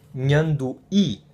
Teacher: an H which is well it's just like in Portuguese and it's like the end with a tilt in Spanish it's a palatal nasal